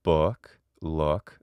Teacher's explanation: when i say it normally it's book look there's a slight diphthongization where it's not simply uh or look uh and that's uh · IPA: ʊ